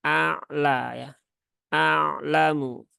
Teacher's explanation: Nah, maka kalau tidak disertai dengan pangkal lidah yang terangkat, nah paling tidak ada 2 potensi kesalahan yang bisa didapati atau dialami oleh pembaca Al-Quran. Kemudian a'lamu ini ain sukun jangan sampai berubah menjadi hamzah menjadi a'lamu ya.